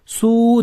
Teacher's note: Vav harfi bitta cho'zib o'qiladi, ya'ni vav cho'zilmaydi. Bitta u cho'ziladi